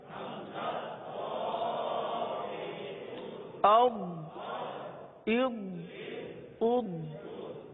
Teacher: अब जो दौद इसके बाद वाला हर्फ है दौद, इस हर्फ को पढ़ने से पहले इसके मखरज पर गौर कर लीजिए, क्योंकि ये हर्फ जबान की करवट اور اوپر کے داڑوں کی جڑ سے ادا ہوتا ہے. داڑ جو دو دو دانت ہوتے ہیں اس کو داڑ بولتے ہیں. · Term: ضاد